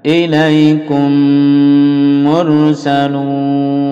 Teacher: ميم bertemu ميم dilebur jadi satu lalu dipanjangkan dengungnya